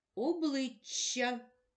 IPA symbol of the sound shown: ч':